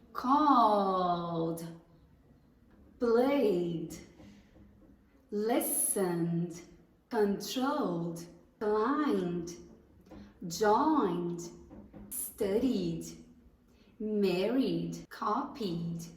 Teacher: Se ele termina com um som vozeado que vibra nas suas cordas vocais, quando você for pronunciar o ED, o som também vai ser vozeado. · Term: som d